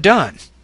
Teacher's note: You should feel vibration of the vocal folds when you produce this sound. Less airflow than the T is pushed through the vocal tract when the D is produced. · Like the T, the D is an alveolar stop consonant. Make this sound with vibration of the vocal folds.